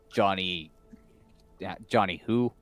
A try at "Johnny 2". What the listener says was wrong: Johnny 2. H is silent.